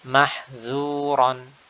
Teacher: Perhatikan bagaimana huruf dzal diucapkan dengan tipis di sini.